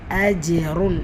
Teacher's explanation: அஜ்ருன் ஜீம் சுக்குன் பெற்று வந்திருக்கு கல்கலா உடைய சட்டம் வசனத்துடைய இடையில வந்திருக்கிறதுனால கல்கலத்துல் சுகரா சிறிதாக அசைச்சால் போதுமானது